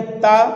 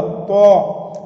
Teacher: इसको पढ़ेंगे ता और इसमें मुंह गोल होगा तो। अगर इसको भी ता और इसको भी ता पढ़ दिए फिर कोई फ़ायदा नहीं।